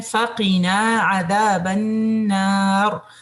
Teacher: نون پہ آپ کا غنہ, را آپ کا فل ماؤتھ ہوگا